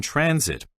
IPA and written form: ˈtrænsɪt (transit)